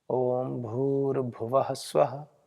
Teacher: भूर में दीर्घ है और भव में ह्रस्व तो जल्दी बोलना पड़ेगा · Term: काल का भेद